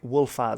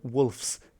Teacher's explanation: We know that in Gothic, this final Z devoices, so a Z to a S. You just don't use the voice when pronouncing it.